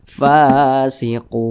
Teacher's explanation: maka huruf Fa Ini dibaca panjang namanya Mad Thobi'i panjangnya itu dua harakat atau kira-kira dua ketukan · Panjangnya itu 2 harokat atau kira-kira 2 ketukan. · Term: mad arid li sukun